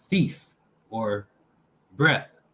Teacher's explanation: this is the theta symbol. Dental, fricative, voiceless.